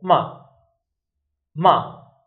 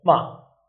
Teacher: We go from high to low. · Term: fourth tone